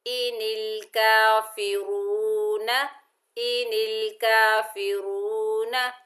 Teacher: یہ واو مدہ ہے، ایک الف کی مقدار کھینچ کر پڑھیں گے، را کو پر پڑھیں گے، اور نون کے اوپر زبر بغیر کھینچے پڑھیں گے، نا۔